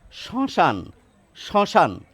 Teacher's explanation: একটু নাকি ভাব আসবে এই স-এর ক্ষেত্রে